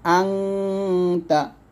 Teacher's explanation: হামজা নুন জবর আং, গুণ হবে এখানে, আং এরকম, আনতা।